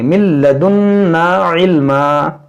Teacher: ادغام، نون ساکن کے بعد لام ہے. من لدنا یہاں پر غنہ بھی کریں گے